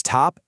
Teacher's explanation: That T in top has a little puff of air with it, right? It's aspirated.